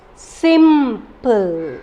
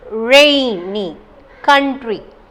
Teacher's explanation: we are giving stress, giving force on the first syllable only